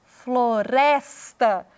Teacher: o res é pronunciado com mais ênfase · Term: sílaba tônica